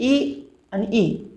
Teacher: ह्रस्व ई आणि दीर्घ ई यांचा उच्चार टाळीला स्पर्श करून होतो म्हणून त्यांना तालव्य स्वर असे म्हणतात